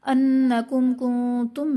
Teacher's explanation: نون مشدد ہے تو یہاں پر غنہ کر کے پڑھیں گے. میم ساکن کے بعد حرف با اور میم کے علاوہ کاف آ رہا ہے تو یہاں پر اظہار شفوی کا قاعدہ ہوگا، یعنی میم ساکن میں غنہ نہیں کریں گے.